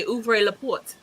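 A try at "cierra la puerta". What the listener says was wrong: I would recommend if you can to roll the r a little stronger when you say put cuz it was too soft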